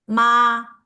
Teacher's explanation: The first tone is flat, so we use this picture from McDonald to show the first tone, ma.